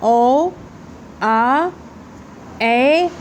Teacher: और विवृत्त में ए, आ, ओ, मतलब इसमें मुंह पूरा आपका खुलेगा। ओ बोलिए, ओ, आ, ए, देखिए पूरा मुंह खुलेगा, अधिक खुलेगा, ठीक है।